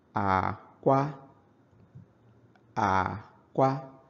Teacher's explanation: So it's low tone and then high tone.